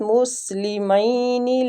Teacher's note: سین باریک سیٹی کے ساتھ